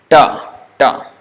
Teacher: is a retroflex or this is also called cerebral da da the tip of the tongue is touching on the top